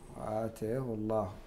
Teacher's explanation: ما دامت اللام قبلها ضمة فإنها تفخم في جميع القراء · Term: التفخيم